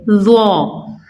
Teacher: ظا کو بھی سا کی طرح ہم نے نرمی سے ادا کرنا ہے، یعنی زبان کو اوپر والے دانتوں سے ٹچ کریں گے اور نرمی سے لیکن موٹا اور پر پڑیں گے